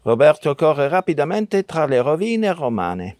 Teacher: many Italian speakers use the uvular R